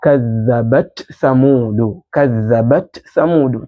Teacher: Ta unaipa sifa zake mbili, ambayo ni sifa ya shidda kule kuibana kwako ile ta kadhabat, na pia unaipa sifa yake ya hams ambayo ni ile jarayanu nafasi, kutembea kwa sauti, ambayo kuiachia kwako kule kadhabat, kisha unaenda kuitamka ile tha kadhabat thamudu. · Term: idhhar